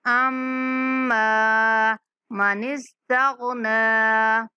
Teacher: أما میم پر غنہ کریں گے